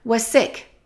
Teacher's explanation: let's connect was and sick because there's only one s when we have to it becomes one was sick reluctant to